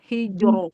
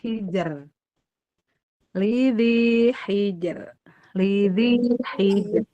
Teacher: jim sukun dia syiddah dan qalqalah dan tipis